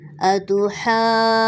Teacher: نون مشدد ہے تو ہم جوائن کرتے ہوئے نون مشدد پہ بھی غنہ کریں گے